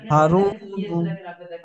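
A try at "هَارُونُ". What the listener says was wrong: হারুনু হবে না ভাই, ভালো করে পড়েন। এখানে দুটো কায়দা আছে। হারুনু, হা টানাবে, রটা টানাবে। হারুনু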